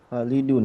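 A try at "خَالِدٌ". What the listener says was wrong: Oke, Khalidun. Ya, khalnya panjang ya. Khalid.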